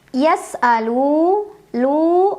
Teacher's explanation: Cara membacanya dipanjangkan lamnya 2 harokat saja. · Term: mad tabi'i